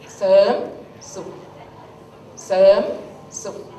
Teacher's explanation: You can hear that Serm. There's no R sound. But in here I put R, right?